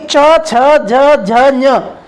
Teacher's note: इनके उच्चारण में हमारे जीभ का अगला वाला भाग तालु से स्पर्श करता है, दांतों से थोड़ा ऊपर, जिसे हम तालु कहते हैं, उसे स्पर्श करता है। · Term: तालव्य व्यंजन